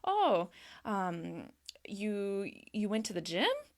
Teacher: And you're raising your voice at the end, kind of asking them to give a little more information. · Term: rising intonation